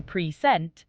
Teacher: in present, stress is on the second syllable. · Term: Word stress